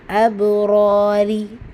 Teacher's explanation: அபுராரி ரா வந்து ஃபத்தஹா பச்சை வந்திருக்கு, இங்கே ரா கெஸ்ரா பச்சை வந்திருக்கு. ஸோ ஃபத்தஹா பச்சை ராயை வல்லினமாக ஓதணும், கெஸ்ரா பச்சை ரீயை மெல்லினமாக ஓதணும்